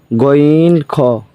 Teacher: তিন নাম্বার মাখরাজ হলকের শেষ হতে